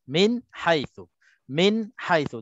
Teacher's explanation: nun mati bertemu dengan ha, hukumnya izhar halqi, bacaannya tak dengung